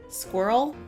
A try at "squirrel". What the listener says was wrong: Yeah, it's a very subtle difference, but somebody pointed out to me that Americans more or less say squirrel in one syllable. It's almost like squirrel. But you don't quite do it. You do put two syllables in there almost.